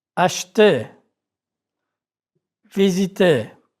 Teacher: R is not pronounced in the infinitive of ER verbs